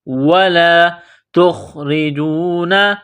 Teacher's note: نقطہ والی تا ہے، اس کو باریک کرنا ہے